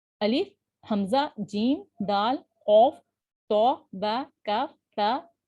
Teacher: جن حروف میں یہ صفت پائی جاتی ہے انہیں حروف شدیدہ کہا جاتا ہے۔ حروف شدیدہ کو ادا کرتے وقت آواز مخرج میں اتنی قوت سے ٹھہرتی ہے کہ فوراً بند ہو جاتی ہے، جس کی وجہ سے آواز میں شدت اور قوت پائی جاتی ہے۔